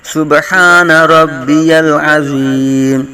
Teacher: زوا کی آواز نکالیں گے، زا کی آواز نہیں نکالیں گے ، صبح با ساکن میں کلکلا کریں گے، سبحان ربی العظیم،